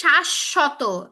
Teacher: তালব্যশ দুইবার উচ্চারণ হচ্ছে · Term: দ্বিত্ব